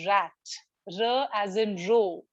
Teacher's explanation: The English r is the post-alveolar r.